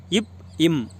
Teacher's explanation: மேல் இதழும் கீழிதலும் பொருந்துவதால் பிறக்கின்ற எழுத்துக்கள்